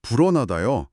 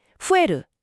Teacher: 비읍이라는 강한 파열음이 일본어로 가면서 후 하고 공기가 빠져나가는 부드러운 소리로 바뀐 거군요.